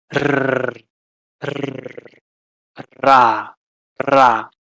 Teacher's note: Then you have the alveolar trill, the tip of your tongue.